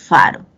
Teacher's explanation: se pronuncian cuando el labio inferior sube a los dientes incisivos superiores faro pero tú ves que sale el aire no si no